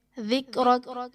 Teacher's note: ذال میں سختی اور سیٹی نہیں آئے گی، بلکہ بالکل نرمی کے ساتھ پڑھا جائے گا